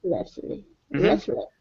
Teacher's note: the t is silent so it's Restless